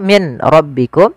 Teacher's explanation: Maka di kita namakan dengan idgham bila ghunah. Hanya masuk saja nunnya kita masukkan ke ro dihilangkan awalnya.